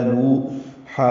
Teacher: ہے، دو حرکات لمبا ہے، نوحن میں واو مدہ ہے، نو حا وسط حلق سے ادا کریں گے